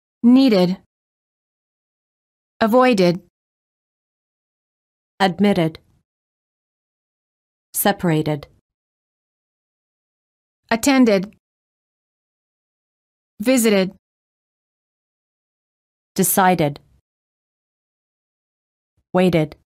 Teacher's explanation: of the word is spelled with the D or a t the e d is pronounced as a separate syllable ID